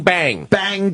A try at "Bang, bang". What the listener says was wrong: Again, you're popping your bees a little bit.